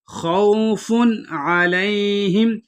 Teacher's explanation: فن کے اوپر اظہار کریں گے کیونکہ آگے حروف حلقی میں سے عین آ رہا ہے، یعنی یہاں غنہ نہیں کریں گے۔